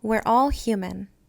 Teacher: A in man becomes mun in human.